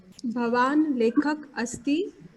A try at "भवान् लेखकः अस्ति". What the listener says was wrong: There are a lot of eating of the sounds. So Bhavan lekhakah asti.